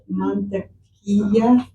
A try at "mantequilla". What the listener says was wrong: Very good.